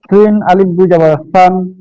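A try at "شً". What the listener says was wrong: বাতাস বের হচ্ছে না। শিন আলিফ দুই যাব শান। সিন সুন্দর হয় কিন্তু শিনটা একটু অন্যরকম হয়ে যায়।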